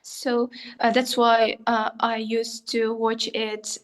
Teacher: The stress timing has gone. Now we are syllable timing.